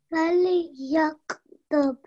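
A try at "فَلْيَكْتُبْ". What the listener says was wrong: Well done. Mashallah. Very well read.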